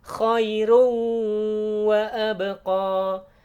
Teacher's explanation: jadi ya idgham bi gunnah, sehingga dibacanya khairu sambil ditahan, didengungkan. Idgham dimasukkan ke huruf wawu bi gunnah dengan dengung ya, dengung, ditahan suaranya.